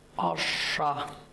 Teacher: Обратите внимание, ударение на первый слог.